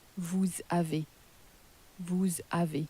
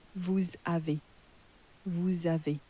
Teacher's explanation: So again, so far we've been pronouncing you have as vous avez, but how you're very often going to hear it pronounced in France is as vous avez, vous avez. So that S has more or less been crashed into the word that follows, into the vowel, and then it sounds a bit like a Z, really.